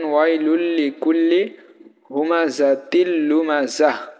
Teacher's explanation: নুন সাকিন বা তানবিনের পরে যদি র বা লাম আসে তাহলে আমরা গুন্না করবো না